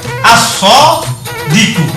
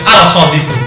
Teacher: Maka apabila setelah al berupa siddah begini, maka nanti bacaan al ini hilang. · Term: al-samsiyah